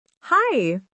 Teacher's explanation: say, hi, with a smile and a rising tone. It makes your voice sound warm and open.